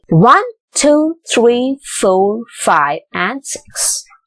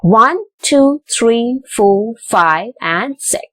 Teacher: when it comes to 6, it is in the falling intonation, but all the others are in the rising intonation